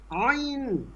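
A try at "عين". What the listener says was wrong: টান হবে বেশি, টান হয়নি। এরকম ভেঙে ফেলেন কেন? খেয়াল করেন, আইন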